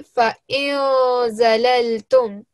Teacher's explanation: we recite this noon sakin from our nose. So we give it a nasal sound, a 2-second light nasal sound